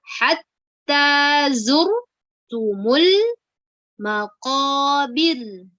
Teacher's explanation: Kenapa dibaca tipis? Karena sebelum huruf ra itu ada huruf yang berharokat kasroh ya, yaitu huruf ba yang berharokat kasroh ya.